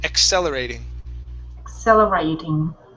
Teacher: when we have a double C the first C is a k sound e the second C is an S sound